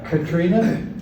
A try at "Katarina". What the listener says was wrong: Katarina. No, Katarina. It's just an extra A in there.